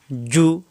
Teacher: কারীমে কিন্তু এরকম থাকবে শব্দের শুরুতে মাঝখানের শেষে জিম পেশ জু জিহ্বার মাঝখানের উপরে তালুতে লাগবে